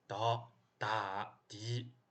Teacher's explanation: 喉咙松弛一下，伴随浊气流，但你那个部位还是非常紧的